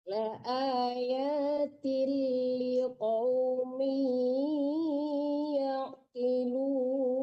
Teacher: kalau tanwin ketemu lam langsung masuk ke lam ya Bu, jangan ada nggak ada dengung di situ ya Bu. Itu namanya ya, hukumnya idgham bila gunah ya.